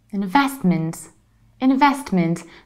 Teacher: so you still stress vest investment and you reduce the ending investment investment however in false page you can skip middle T